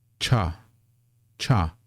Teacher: when you say this one with a CH sound cha you feel that puff of air that's because this is the first of the aspirated consonants